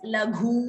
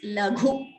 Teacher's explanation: ghu is mahaprana and hrasva that is short letter so we should not prolong it